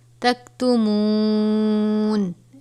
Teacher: کنتم تکتمون، میم واو پیش منہ ہے، واو سے پہلے پیش ہو تو واو مدہ ہوتا ہے اور اس کو ہم ایک الف کے برابر پڑھیں گے